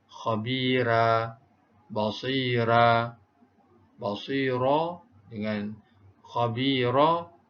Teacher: Dibaca dengan dinipiskan kedua-dua huruf ra.